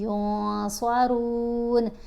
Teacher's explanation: پھر عین کو آپ نے اچھے سے ادا کرنا ہے، عنہم العذاب ولا هم ینصرون، نون کے اوپر اخفا کریں گے، یعنی نون کی آواز کو ناک میں چھپا کر پڑھیں گے، یون نہیں پڑھیں گے، ینصرون۔